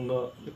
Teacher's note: क च्या गटाचा अनुनासिक काय असतो? ङ असतो. ङ. त्यामध्ये ग ची छटा असते